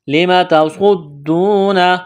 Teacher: سواد کو موٹا کرنا ہے، سیٹھی کی آواز پیدا کرنی ہے، دال میں سختی کریں گے، واو مدہ ہے، الف کے برابر کھینچنا ہے۔